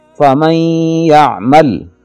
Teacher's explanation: یہاں نون ساکن کی آواز کو یا میں ملا کر غنے کے ساتھ پڑھتے ہیں، ادغام کر کے پڑھتے ہیں فمن یعمل۔